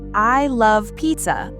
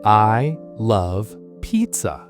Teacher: I would stress the word love and the word pizza.